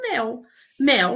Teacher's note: Eu dei o exemplo do mel. Mel, nós falamos eh com e aberto